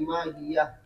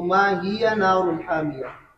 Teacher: हज़फ करेंगे। हा वक्फ की सूरत में पढ़ी जाएगी और वसल की सूरत में हा नहीं पढ़ी जाएगी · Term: हा महजूफा